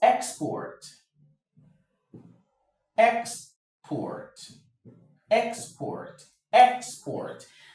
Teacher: The stress is on the EX. That's the first syllable.